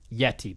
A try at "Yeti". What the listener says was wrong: You don't need to pronounce the T. It's a Yeti.